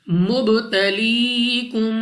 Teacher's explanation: اس کے بعد با ہمارے پاس قلقلہ میں سے ہے، یعنی جب ہم اس لفظ کو ادا کریں گے تو ہمارے مخرج میں جنبش سی ہوگی، یعنی ہمیں اپنی آواز واپس لوٹتی ہوئی سنائی دے گی